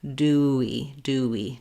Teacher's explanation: we naturally have the w rounded glide in between those